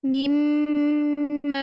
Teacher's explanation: Mim tasydid, gunnah yang lama sama tingkatan gunnah yang pertama. Ma-nya terus mat 2 harokat tabii.